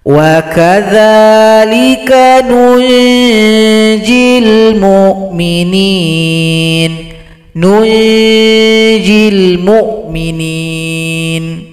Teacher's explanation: Sehingganya dia dibaca ikhfa hakiki, dibaca dengung serta sama-samar mengarah kepada huruf jim.